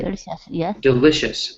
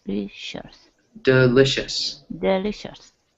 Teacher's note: See how there's a little bit of stress on that L